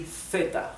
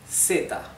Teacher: So in Spanish from Spain, so I mean in in most uh most uh parts of Spain in Europe, this would be theta like the th in English theta th right. However, in all Latin American countries and a few parts of Spain, there is no sound like th everything is pronounced th like a simple S.